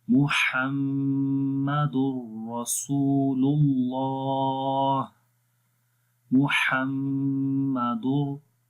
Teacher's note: इल्लल्लाहु मुहम्मदुर, मीम के ऊपर शद है, गुन्ना करेंगे, आवाज़ को नाक में लेकर जाएंगे और 1 सेकंड लंबा करेंगे · रा के ऊपर ज़बर है, उसको मोटा पढ़ेंगे। रसूलुल्लाह, सीन को भी लंबा करेंगे, वाव मद्दा है, वाव के ऊपर जज़म है, उससे पहले पेश है और अल्लाह के नाम से पहले पेश आ गई है।